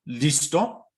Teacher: the second syllable, to, will be heard as having a higher pitch than the first syllable